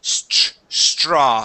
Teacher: So the TR is a CHR sound